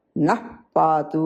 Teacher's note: ప ఉన్నందువల్ల విసర్గ పూర్తిగా పలకరు